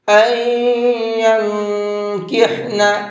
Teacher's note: اخفا کریں گے اس لیے کہ نون ساکن کے بعد میں کاف ہے ، اور کاف اخفا کے حرفوں میں سے ہے۔ نون ساکن